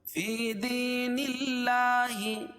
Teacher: اللہ کے لام پر کھڑا زبر ہے، کھڑا زبر قائم مقام الف مدہ کہ اس کو ایک الف کے برابر کھینچ کے پڑھتے ہیں